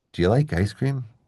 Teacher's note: Do you, because you is unstressed, becomes schwa, you. So, do you becomes dia.